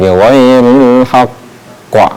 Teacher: Ketika kita membacanya ditahan sebentar, kemudian huruf qalqalahnya kita keluarkan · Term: qalqalah akbar